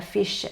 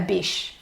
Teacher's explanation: they've taken a long sound which is /ff/ and they're making it /b/ instead which is a very short sound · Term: stopping